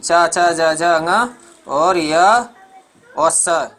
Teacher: ये तालु से बोले जाते हैं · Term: तालव्य ध्वनि